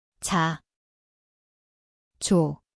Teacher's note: Zvuči kao J. Mjesto je desni nepce, afrikat.